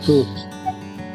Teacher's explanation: Yang pertama lepaskan nafas dia hams. Kemudian tebalkan bunyi istil.